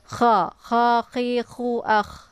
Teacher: Dia letaknya di tenggorokan bagian atas, sejajar dengan huruf gha ya.